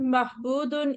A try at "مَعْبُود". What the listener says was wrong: معبودن ہاں نہیں ہے عین ہے معبودن عبادتن ٹھیک ہے پھر اب یہ یاد رکھیں دیکھیں باقی چاروں بابوں کے آپ کے چاہے وہ داربا ہو چاہے وہ سامعہ ہو چاہے فتح ادھر نہیں ہے وہ ہو سب میں زیر والی حمزہ لگتی ہے جب فعل امر ہم